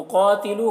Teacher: قاف کو پور پڑھیں گے، قاف حروف مستعلیہ میں سے ہے، تو یہاں پر وقف مطلق کی علامت ہے، یہاں پر وقف کریں گے۔